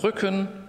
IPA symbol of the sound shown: ʏ